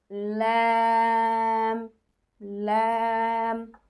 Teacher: জিহ্বার আগার কিনারা সামনের উপরের দাঁতের মাড়ির সঙ্গে লাগিয়ে